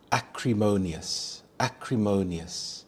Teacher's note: The stress is on the third syllable. Mo. Acrimonious.